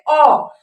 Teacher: जब आप अ बोलिएगा ना तो आपका जो जीभ का बीच का हिस्सा होगा ना वो ऊपर की तरफ उठ जाता है। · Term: मध्य स्वर